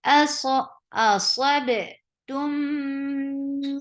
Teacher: So give a nice gunna. You're keeping the sound in your nose for a longer time. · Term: akmal gunna